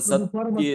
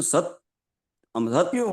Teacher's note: જોડાક્ષર પહેલાનો થડકાર વાળો ઉચ્ચાર થડકાર એટલે કે ઝાટકો લાગતો હોય બોલતા